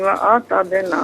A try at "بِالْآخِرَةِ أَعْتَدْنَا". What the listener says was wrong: بالآخرتی و اعتدنا نہیں ہے، اعتدنا، واو نہیں ہے۔